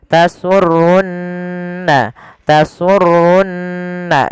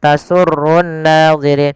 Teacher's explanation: ada nun berharakat tasydid maka ia kita baca dengan bacaan gunah. Ditahan suara nunnya. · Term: gunnah